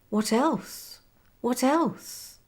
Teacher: with the stress on else